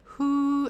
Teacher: give them the little h at the front the little fricative